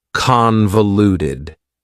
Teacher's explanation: Convoluted also has 4 syllables, and the stress is on the first syllable